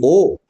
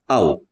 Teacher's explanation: कंठ और ओष से उच्चारित होती है इसलिए इसे हम कहेंगे कंठ होष कंठ और ओष से उच्चारित